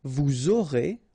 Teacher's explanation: final S not pronounced, and then you make the liaison, vous aurez